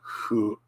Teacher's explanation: hu is actually hu, a very light F sound